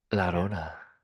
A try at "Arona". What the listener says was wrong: No, it's just there's no la.